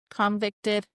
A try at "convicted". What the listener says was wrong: That's the way you said convicted. You had an emphasis on that convicted.